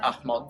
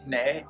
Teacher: the fact that it has voiceless nasals